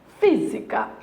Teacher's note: o que nós temos é a anti penúltima sílaba é acentuada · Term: proparoxítona